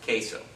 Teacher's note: The word queso, the vowels that are being pronounced are the E and the O only.